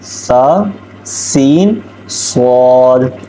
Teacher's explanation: سا کو جو ہے ہم نے وہ نرمی کے ساتھ پڑھنا ہے، سین کو ہم نے سختی کے اور سیٹی کے ساتھ پڑھنا ہے، اور صاد کو ہم نے موٹا کر کے پڑھنا ہے، اور سین اور صاد کو ہم نے 4 الف کے برابر لمبا بھی کر کے پڑھنا ہے۔